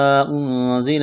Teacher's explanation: الف مدہ ہے، یہاں مد بھی ہے، اس کو کھینچیں گے۔ نون ساکن کے بعد زا ہے، حروف اخفا ہے، غنہ کریں گے، آواز ناک میں چھپائیں گے، زا میں سیٹھی کی آواز پیدا کریں گے۔